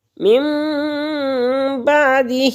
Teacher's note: من بعدہ، اور یہاں پر اقلاب کا قاعدہ لگ رہا ہے، نون ساکن نون تنوین کے بعد با آ جائے تو یہاں پر اقلاب ہوگا، یعنی نون جو ہے اس کے اوپر چھوٹی سی میم بنی ہوئی ہے تو اس نون ساکن نون تنوین کو میم میں بدل دیں گے۔ من بعدہ، ہا کھڑی زیر ہے، 1 الف کے برابر کھینچ کر پڑھیں گے